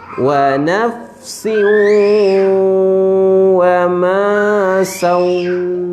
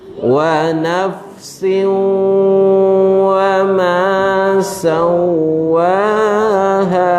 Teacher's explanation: tanwin bertemu dengan waw. Hukumnya adalah idgham ma'al gunnah, ya. Dia masuk dan bersama-samanya ada dengung.